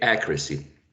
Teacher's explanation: And the second and the third one are schwas, quite lax vowel sounds.